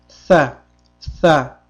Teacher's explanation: Hamda tilimiz tepa tishimizga tegib, pastki tishimiz bilan tilimiz orasida ozgina tirqish qoladi. Mana shu holatda talaffiz qilamiz.